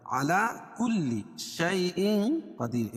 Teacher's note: اخفاء حقیقی، کیونکہ تنوین کے بعد حروف اخفاء کے 15 حرفوں میں سے قاف ہے، تو یہاں ناک میں آواز کو چھپا کر پڑھیں گے